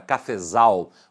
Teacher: Quando eu falo a palavra cafezal, você observa que a sílaba tônica está na última, zal.